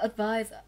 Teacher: Đọc là advise, âm đầu tiên của cô là ơ, âm thứ hai là eyes. Trọng âm không rơi vào ơ và rơi vào nguyên âm đôi, vậy nó rơi vào âm tiết thứ hai.